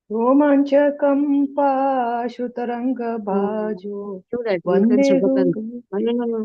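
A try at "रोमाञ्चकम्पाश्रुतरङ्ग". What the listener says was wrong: Generally, we make so many mistakes. Romanchakampa Shru. Ashru. Kampaha Ashru Taranga. Shrutaranga has no meaning actually.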